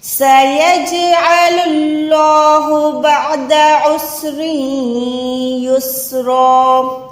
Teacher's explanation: عین کو حلق کے درمیان سے نکالیں، اللہ کا نام موٹا ہے کیونکہ اللہ کے نام سے پہلے پیش ہے۔ · جیم ساکن کو قلقلہ دیں یعنی آواز کو لوٹائیں